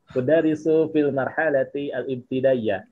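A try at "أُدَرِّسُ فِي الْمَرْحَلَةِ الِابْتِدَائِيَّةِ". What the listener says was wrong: disambung aja, udarisu fil marhalatil ibtidaiyah.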